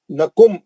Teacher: نکم میم ساکن کا ادغام شفوی ہے, حرف میم ہے